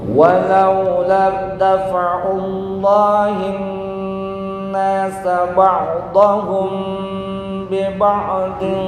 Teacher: ba'dahum bi ba'dahum mim mati bertemu ba. Dengung.